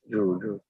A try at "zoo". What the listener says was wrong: You have to practice the z sound. ज आता है, but आपको z practice करना है.